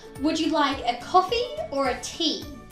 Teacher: for either or questions on the first option our voice will rise